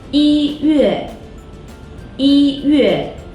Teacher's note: Here, 一 acts as an ordinal number, which means first rather than one, so it's the first tone.